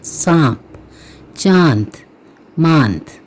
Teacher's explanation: हमने इसको नून को हल्का पढ़ना है, ज़ोर पूरा मुकम्मल नहीं पढ़ना